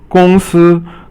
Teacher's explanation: 公 司 is all first tone